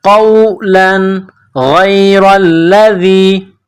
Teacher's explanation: تنوین کے بعد غین ہے، حروف حلقی ہے تو یہاں تنوین پر غنہ نہیں کریں گے